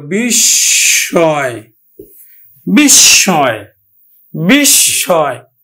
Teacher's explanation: শব্দের মধ্যে মফলা আছে, এই জন্য মফলাযুক্ত বর্ণটি দুইবার উচ্চারিত হবে। বিশ, থেমে গেল। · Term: দ্বিত্ব উচ্চারণ